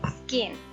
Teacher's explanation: अब S के बाद अगर का साउंड प्रोड्यूस हो रही है, इवन वो के साथ हो रही है, सी के साथ हो रही है, तो और क्यू के साथ हो रही है तो फिर हम उसको एस्पिरेटेड नहीं करेंगे, वो का होगा, वो खा की साउंड प्रोड्यूस नहीं करेगा। लाइक स्किन, तो इसमें आप देखें SKIN, पहले S है और उसके बाद का की साउंड है तो क्या हो जाएगा स्किन, स्किन नहीं होगा, ठीक है। · का इज अनएस्पिरेटेड आफ्टर S। अब S के बाद अगर का साउंड प्रोड्यूस हो रही है, इवन वो के साथ हो रही है, सी के साथ हो रही है, तो और क्यू के साथ हो रही है तो फिर हम उसको एस्पिरेटेड नहीं करेंगे, वो का होगा, वो खा की साउंड प्रोड्यूस नहीं करेगा।